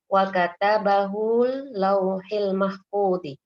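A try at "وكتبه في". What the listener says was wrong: Wa katabahu fi, ada fi-nya.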